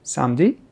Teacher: So here we don't pronounce the E in the middle.